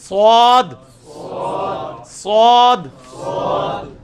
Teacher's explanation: صخرج ایک ہے صرف اس کو موٹا کر کے پڑھنا ہے اس میں بھی سیٹی کی اواز ائے گی